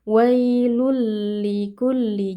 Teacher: Jadi tidak ada sisa-sisa dari tanwin atau bunyi nun sukun yang ada pada tanwinnya. Langsung masuk ke lam. · Tanwinnya dileburkan ke dalam lam ya, sehingga tanwinnya ini menjadi hilang, lalu lam menjadi bertasydid. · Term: idgham bila ghunah, idgham bila gunnah